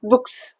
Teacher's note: voice less sounds at the end of the word వచ్చినప్పుడు plural form చేసినప్పుడు అవి ఎస్ sound ని ఇస్తాయి